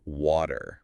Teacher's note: When a T falls between two vowel sounds, it often becomes this very soft, quick sound. It's called a flapped T, and it sounds almost exactly like a quick D sound.